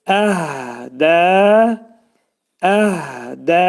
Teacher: Uzadacağıq. Ədə, əhdə hə hərfi boğazın aşağısından çıxarırıq. Amma bəzi vaxtı Quran oxuyanlar bunu boğaza salırlar.